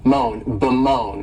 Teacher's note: verb is to Bone and this verb has two sylla and the stress is on that second syllable